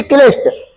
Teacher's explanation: साथ में ट वर्ग के वर्णों के साथ में क्यों क्योंकि ट वर्ग के वर्ण मूर्धा से बोले जाते हैं और ये वाला सा भी आपका मूर्धन्य सा है